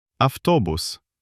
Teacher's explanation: the letter t is voiceless and it infects the letter b with its voicelessness and it becomes >> avtobus Incredible. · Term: regressive assimilation